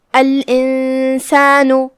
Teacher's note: فَأَمَّا کلمت الانسان میں یہاں نون پہ جزم ہے اور اس کے بعد حرف السین ہے. سین حروف الاخفاء میں سے ہے، لہذا ہم نون کو چھپاتے ہوئے مطلب بغیر ظاہر کیے ہوئے غنہ کے ساتھ یہ حکم کو ادا کریں گے